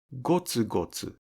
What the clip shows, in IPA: gotsugotsu